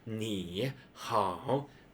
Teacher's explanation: So 你好, that's like a three, like a tone, the third tone, like going down, going up. If two combine them together, it becomes pretty hard for human, not just the Chinese, but everyone to pronounce.